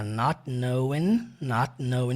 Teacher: E esse T do not também não aparece.